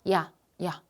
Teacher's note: 하는 모음 발음해 봐 이야라는 거 발음해 보면 어때요 야 야 입이 벌어져요 벌어진다는 건 혀가 같이 낮아지는 거야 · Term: 이중 모음